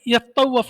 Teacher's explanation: فیہ ادغام التاء فی الاصل فی التاء، اس میں یتطوف تھا، اصل میں تا کو تا میں مدغم کر دیا ہے، یطوف ہو گیا